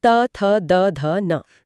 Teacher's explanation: यहां जीभ दांतों को स्पर्श करती है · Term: त वर्ग